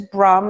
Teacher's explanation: it is brah like Brahman but the R is rolled and the idea is that the tongue is striking the roof of the mouth